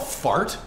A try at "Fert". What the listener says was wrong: No, it's pronounced Fert. There's an umlaut over the A, which, so it's pronounced like Fert.